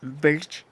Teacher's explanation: Es más bien como una E, pero con R combinado.